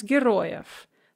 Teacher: because that v is in word final position, we pronounce it f